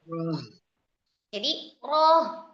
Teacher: Ada aliran karena huruf h memiliki sifat rakhawah.